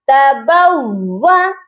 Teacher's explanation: واو مشدد ہے، اس پر ہم نے سختی بھی کرنی ہے اور 2 بار بھی پڑھنا ہے